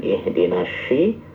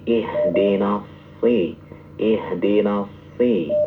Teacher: huruf so-nya jangan mirip dengan sya. Ya, bukan ihdinas syi, tapi ihdinas si.